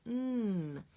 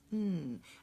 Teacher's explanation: another nasal and how what does that mean it means that the air is being cut off it cannot come out the mouth because my tongue is blocking it · the tongue is actually touching all of the inside of my upper teeth and that's blocking the air flow and so the air is coming up my nose